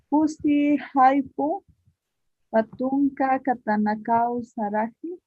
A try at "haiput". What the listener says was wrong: Haiput, ese T al final, siempre van a enfatizar. La T, la termina, es sufijo ta, ¿ya?